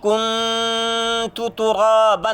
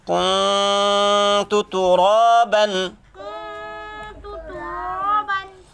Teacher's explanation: اخفا کرنا ہے. نون کی آواز کو بالکل چھپا دینا ہے، گم کر دینا ہے.